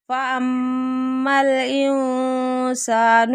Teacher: انسان نون ساکن کے بعد سین آ رہا ہے، یہاں پہ اخفا ہو رہا ہے